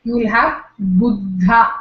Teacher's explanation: According to him, two Mahapranas, one after the other. The first Mahaprana loses its aspiration and it becomes an Alpaprana. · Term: Grassmann's law